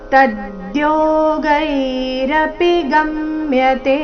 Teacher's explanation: ತದ್ಯೋಗೈ ತ ಮೇಲೆ ಆಘಾತ